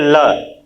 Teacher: ल जैसे बोलते हैं वह दांत से ही उच्चारण हो रहा है